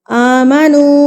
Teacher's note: اس کو ہم نے 3 حرکات کے برابر کھینچ کے پڑھنا ہے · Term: چھوٹی مد